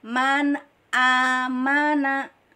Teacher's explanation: Maka kita dalam mengucapkan huruf hamzah dari pangkal tenggorokan